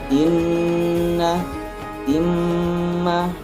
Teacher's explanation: nun dan mim bertasydid, maka itu akan mendengung sendirinya. Itu hurufnya ada nun sama mim apabila bertasydid.